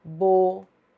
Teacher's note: a letra U tônica formando hiato com a sílaba anterior, só que na sílaba anterior nós temos um ditongo. Então, essa letra U, embora seja tônica e forme hiato com a sílaba anterior, ela não será acentuada, porque na sílaba anterior nós temos um ditongo.